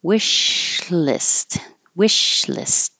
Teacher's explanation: the sh has continuous air flow and then you go to the L wishlist wishlist exclamatory e you hold your tongue in the K